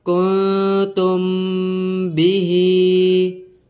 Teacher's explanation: میم ساکن کے بعد حرف با آ رہا ہے تو یہاں پر اخفاء شفوی ہوگا، یہاں پر غنہ کریں گے۔ کنتم بیہی، ہا میم پیش، ہم، فا یا زیر، فی، ہم فی، ہا الف زبر، ہا، ہم فی ہا۔